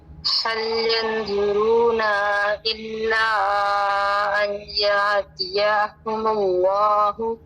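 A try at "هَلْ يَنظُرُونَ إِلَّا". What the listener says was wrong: यंज़ुरूना लंबा नहीं होगा, ना को लंबा नहीं करेंगे, नून ज़बर ना बस। यंज़ुरून इल्ला,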